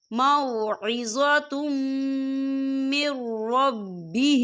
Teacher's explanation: فَمَن جَاءَهُ مَوْعِظَةٌ مِّن رَّبِّهِ، یہ دیکھیں موعظۃ، تا کے پر تنوین ہے اور تنوین کے بعد جو ہے میم آ رہا ہے اور میم جو ہے حروف یرملون میں سے ہے تو یہاں پر ادغام ہوگا اور ہم یہاں غنہ بھی کریں گے